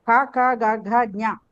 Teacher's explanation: క క గ ఘ జ్ఞ కంఠము నుండి పలకబడేవి కంఠములు.